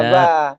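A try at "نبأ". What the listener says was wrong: iya benar.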